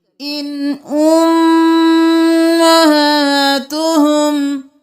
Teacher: یہاں پر اخفا نہیں کریں گے، اظہار کریں گے، کیونکہ آگے حروف حلقی میں سے حمزہ ہے تو ہم کریں گے ان۔